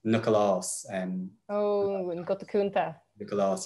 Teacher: you get what's called an epenthetic vowel between the C and the L. So it's Nioclás.